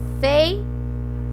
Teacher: fonologicamente aqui ela passa a ser uma semivogal porque o som dela é um pouco mais fraco. Eu não falo feiura, eu falo fei, olha o E como ele é mais forte, fei, ra.